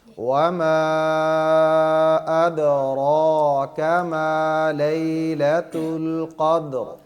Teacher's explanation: تو یہاں پہ جو قدر ہے دال کو قلقلہ کریں گے اور را کو موٹا کریں گے